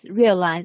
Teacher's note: And the stress is on the first syllable.